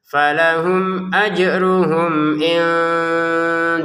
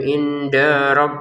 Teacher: da langsung ke ro ya jangan dibaca panjang